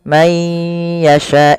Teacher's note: memasukkan nunnya kepada huruf ya, dan hukumnya yaitu idgham bi gunnah.